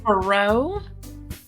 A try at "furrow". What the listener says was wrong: You're probably putting emphasis on the first syllable. Furrow. Furrow. Furrow versus furrow. Furrow. Furrow. Furrow. Furrow.